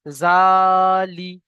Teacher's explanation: জাল খাড়া জাবারে যা, জালের উপরে খাড়া জাবার এসছে, খাড়া জাবারটি হলো আলিফ মাদ্দার সমতুল্য, একে এক আলিফ পরিমাণ টান দিয়ে পড়তে হয়। লামজের লি, লামের নিচে জের এসছে, যেটি হলো হারাকাত, হারাকাতের পড়াকে তাড়াতাড়ি পড়তে হয়, টান দেওয়া নিষেধ।